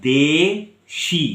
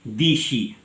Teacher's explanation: তাহলে আমি একবার দে, শি জিভটাকে নিচে নামিয়ে আবার ওপরে ওঠাচ্ছি।